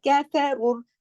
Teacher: रा मोटा पढ़ा जाएगा क्योंकि रा पर पेश है। जब रा पे पेश यानी दम्मा हो तो रा चूंकि कंडीशनल हैवी है, अगर रा पर जबर होगा या पेश होगा तो रा मोटा पढ़ा जाएगा।